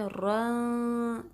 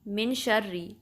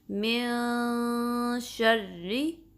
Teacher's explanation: تو ہم نون کی آواز کو چھپائیں گے اور شین کے لیے ریڈی ہو جائیں گے. پھر شین کو پروناؤنس کریں گے تھوڑا سا غنہ کرنے کے بعد، من شرری. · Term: اخفا